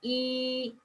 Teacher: when you produce e, your lip are spread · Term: spread lip